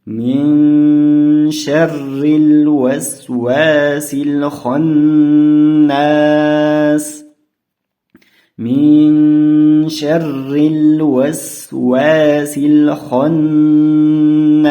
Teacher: Buni sh harfiga kirgizib o'qiymiz, ya'ni min sharril. Mana bu joyda r harfidan keyin kasra kelyapti. R harfini inchiroq o'qiymiz.